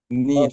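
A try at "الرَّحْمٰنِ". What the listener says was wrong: লম্বা করা যাবে না, নুন রজের নিয়র, নির হবে না, নিয়র, নুন রজের নিয়র। আচ্ছা, র জবর, হরকতের উচ্চারণ কিন্তু একটু লম্বা হয়ে যাচ্ছে, এটাকে আর একটু ছোট করার চেষ্টা করব, বড় কিন্তু ছোট। র জবর র, র জবর র, এর থেকে বেশি সময় নেব না।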